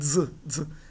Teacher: aqui nesse caso dessa dupla, o som pronunciado é sonoro, não surdo, não é mas é dz. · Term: zeta